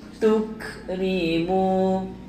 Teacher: Tuk nafas ada angin sikit